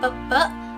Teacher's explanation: Bunyi agak rendah. Bunyi yang dihasilkan dengan cara posisi lidah agak merendah sehingga agak menjauhi langit-langit keras.